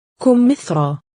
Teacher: we pronounced ya as a long vowel aleph, and there are not dots below it.